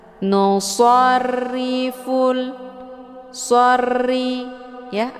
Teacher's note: ini berharakah kisra lah jadi hukum bacaannya adalah tarqi murakqun yaitu ro yang dibaca tipis ya jadi dengan posisi pangkal lidah tidak terangkat ke langit